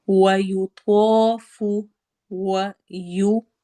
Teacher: و میں ہونٹ گول ہوں گے، یو تو ہیوی لیٹرز میں سے ہے، حروف مستعلیہ میں سے ہے، موٹا کر کے پڑھنا ہے، الف سے پہلے زبر آ رہی ہے اس لیے ہم اس کو 2 حرکہ لمبا کریں گے